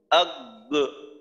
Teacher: যখন মাখরাজে গেলাম তখন আওয়াজটা বন্ধ হয়ে গেল, আবার যখন মাখরাজ থেকে আলাদা হলাম তখন আর একটা আওয়াজ হইল, আগ, এমন না, একবারে শেষ।